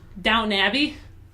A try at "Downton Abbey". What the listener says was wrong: Downtown Abbey? You said Down Abbey. didn't just put the ton in there. down. It sounds like you're, like, doubting. Like doubting. Doubting Abbey.